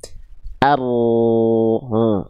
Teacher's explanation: Jadi yang nempel ke langit-langitnya adalah bagian punggung lidah. Adapun ujung lidahnya dia hanya terangkat saja dan membuat sedikit celah untuk jalur keluar dari e suara dari huruf ro ya.